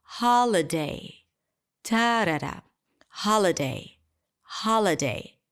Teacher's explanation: All of a sudden, the 'ho' is really long cause it's the primary stress · So from this rhythm of like where every syllable has the same length, holiday, holiday, all of a sudden the ha is really long because it's the primary stress. Ha, l, really short, holiday, ta-da-da, holiday, holiday.